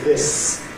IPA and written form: ðɪs (this)